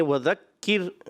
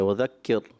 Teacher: راہ باریک کرنی ہے، پر نہیں کرنا آپ نے